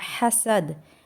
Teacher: फिल उकद और इजा हसद में भी दाल पर कलकला होगा